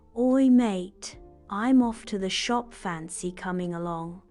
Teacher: Notice the dropped G in coming and the casual tone.